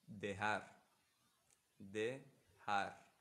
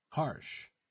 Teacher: So the Spanish J will have this velar. The place of articulation will be velar. But for English H, the place of articulation will be glottal.